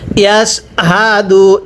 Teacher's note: গোল হা গুলো উচ্চারণ করার সময় আপনার গলার মধ্যে একটু আওয়াজ করে পড়তে হবে। পড়ুন ইয়াস হা দাল পেশ দু ইয়াস হাদু একসাথে পড়বেন।